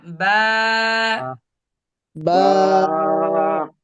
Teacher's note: দুই ঠোঁটের দুই ভিজা ঠোঁটের অংশ মাঝখান থেকে